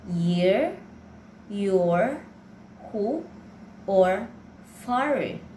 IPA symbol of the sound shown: j